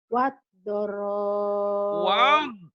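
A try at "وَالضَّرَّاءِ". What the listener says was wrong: Waddarra. Waddarra. Ya, kurang nyamber, Ibu. Kurang nyamber. Waddarra.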